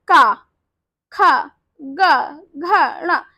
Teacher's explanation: शब्द गले से आवाज आ रही तो हम इसे कहते हैं कंठ ध्वनि